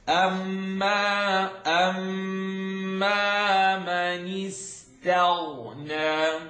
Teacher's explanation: You know the ta is light, the ghain is heavy.